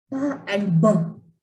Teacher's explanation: And say the word pa and ba. When you say pa and ba, only small puff of air comes. It means these are plosive sounds.